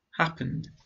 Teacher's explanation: Happen, n. The last sound is voiced, n. I add the D sound. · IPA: /n/